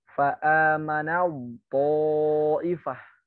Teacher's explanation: Huruf ta bertemu dengan to. Ta-nya tidak usah dianggap, langsung masuk ke to. Idghamnya kamil.